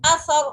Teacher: हमजा ज़बर आ सा रा ज़बर सर असर रा साकिन से पहले ज़बर आ गई, रा बोल्ड पड़ी जा रही है